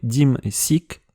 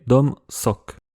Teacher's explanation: le O dans une syllabe fermée est devenu I